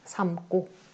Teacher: 어간의 받침 미음이 뒤에 기역, 디귿, 시옷, 지읒과 만났을 때 뒤에 어미의 첫 소리를 된소리로 발음한다